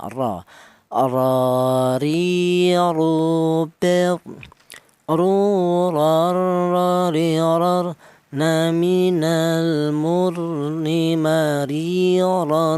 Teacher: Untuk huruf ra ini keluarnya huruf berasal dari ujung lidah menyentuh langit-langit mulut